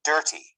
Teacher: the stress is in the first part.